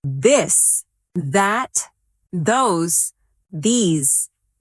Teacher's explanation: let your tongue touch your teeth lightly, but use your voice.